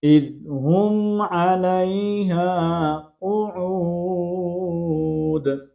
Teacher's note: علیہ الف مدہ ہے، ایک الف کی مقدار کے اندر کھینچ کر پڑھیں گے اور یہاں پر دال کا ہم نے کلکلے کو واضح کرنا ہے.